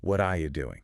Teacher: The T sound at the end of what and the R sound in are, they just get dropped completely. >> Wow. >> And the word you shrinks down into this quick ya sound.